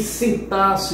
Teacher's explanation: Em sintaxe você tem um dígrafo nesse IN. Esse N apenas nasaliza o I.